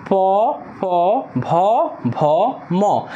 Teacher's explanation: আপনি দেখেন প্রত্যেকটা ধ্বনি উচ্চারণের সময় আমাদের যে ঠোঁট, এই ঠোঁট একটার সাথে একটা স্পর্শ লাগতেছে। যেহেতু এই বর্ণগুলো, এই ধ্বনিগুলো এই ঠোঁটের সাহায্যে উচ্চারিত হচ্ছে, তাই সেগুলোকে বলা হয় ওষ্ঠ। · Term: ওষ্ঠ ধ্বনি